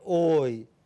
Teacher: from back, between half closed and half open, rounded, to front, half closed, unrounded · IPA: /ɔı/